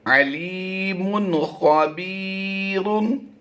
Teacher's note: यहां पर हमने इजहार करते हुए पढ़ना है, यानी हमने गुन्ना नहीं करना, जाहिर कर देंगे इसे।